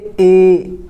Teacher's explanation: अर्ध संवृत स्वर, इनका जो मुख द्वार होता है वो क्या होता है? हमारा जो मुख द्वार है वो आधा खुलता है। जैसे ए, आप प्रैक्टिस करो, थोड़ा सा बोल के देखो कि मुंह आपका जो है आधा ही खुलेगा।